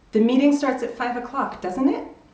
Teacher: My pitch rises at the end, and then you know it's an actual question and you want an answer.